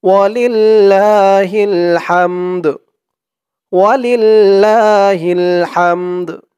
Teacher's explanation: ওয়ালিল্লাহিল হামদ হা দিয়ে এই মিম ধরবে আবার এই দালও ধরবে দালের উচ্চারণটা লাস্টে একটু ভাসবে